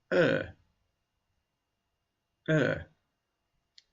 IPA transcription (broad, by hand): ɜ: